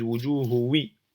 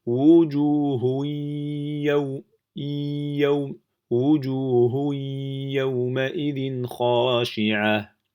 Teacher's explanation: on va passer directement à la lettre ya avec une ghunna